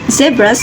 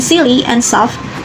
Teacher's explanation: The sound offers the same place and manner as us, making them a minimal pair based on voicing as it were. This tongue twister challenges the speakers to interchange between voiced and voiceless alveolar fricatives, frequently in quick succession, which demands clear articulation and control.